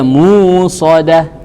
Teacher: Ibdal. Dia mengganti hamzah ini menjadi huruf mad.